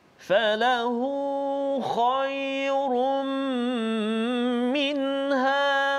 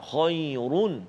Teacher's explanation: kita baca kha, huruf isti'la tebal, dan juga run, ra yang kita kena baca tebal sebab baris dua dhammah kan, dhammatain, baris dua depan.